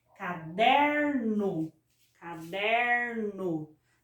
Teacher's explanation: observa que a sílaba der é a sílaba que eu coloco mais força, mais intensidade. É a sílaba que eu pronuncio com maior, que eu estendo mais na hora de pronunciar. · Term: paroxítona